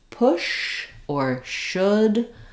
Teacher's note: that push and should have a little bit of lip rounding that o vowel is also a LAX vowel but has some rounding